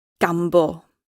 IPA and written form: ˈɡamːboː (Gambo)